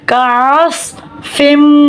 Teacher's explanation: صاد حرف مستعلیہ ہے, صاد کو پر پڑھیں گے. صاد سیٹی والا حرف ہے, اس میں سیٹی ہوگی